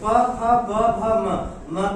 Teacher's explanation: प फ ब भ म का उच्चारण स्थान इनका क्या है? इनका हो जाता है ओष्ठ।